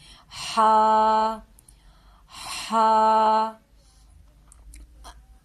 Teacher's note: یہ ہا جو ہے یہ حلق کے درمیانی حصے سے نکلے گی، اور دونوں ہا میں ہم فرق رکھیں گے، اس ہا کو حلق سے نکالیں گے، ہا، ہا۔